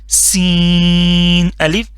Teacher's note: اس میں سی ٹی کی آواز نکالنی ہے لازمی